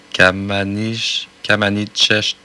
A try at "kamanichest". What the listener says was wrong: Kamanchest. Ouais, le I se prononce pas.